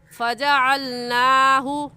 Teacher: نون کے اوپر کھڑا زبر ہے، اسے ایک الف کے برابر کھینچیں گے